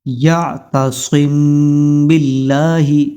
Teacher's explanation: تو غنہ اس میم ساکن کے اندر ہوگا یعتصم باللہ تو میم ساکن کے بعد یہاں پر با آیا ہے تو اس میم کے اوپر غنہ ہوگا.